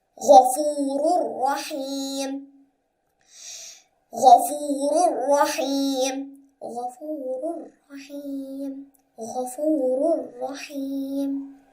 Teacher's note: there is ra after tanween. So you must also not make ghunna.